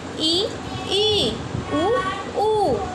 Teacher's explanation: संवृत स्वर के उच्चारण में मुख्य द्वार सकरा हो जाता है।